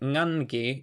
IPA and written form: ŋanki~ŋangi (ngangi)